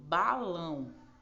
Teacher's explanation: a sílaba tônica tá no final